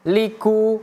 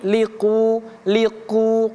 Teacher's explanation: huruf qof merupakan huruf tebal tidak boleh kita baca ku